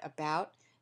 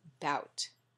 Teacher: the uh in about is an unstressed syllable but simply in African-American English that would be dropped and you would hear just bout articulatory development in children who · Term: unstressed syllable deletions